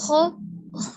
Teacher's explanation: Kalau kho, al-hams, ada napasnya nih.